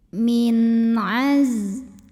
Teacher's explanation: Ada izhar halqi karena ada nun sukun yang ketemu sama huruf halqi atau huruf tenggorokan yaitu ain. Maka nun sukun ini kita bunyikan dengan izhar atau jelas bunyi n-nya.